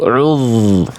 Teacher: Fokus pada zal sukunnya. Banyak orang melafazkan zal sukun apabila didahului oleh huruf berharakat dhammah, bunyi zalnya jadi tebal.